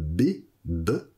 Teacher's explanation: Quand mon vav est suivi d'une consonne qu'on va appeler une consonne bilabiale qui se fait avec les deux lèvres, comme B, B, eh bien on va avoir une simplification.